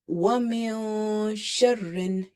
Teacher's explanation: It's not touching anywhere. Okay, but the moment you will say sharrin, your tongue is tightly pressed with the upper palate.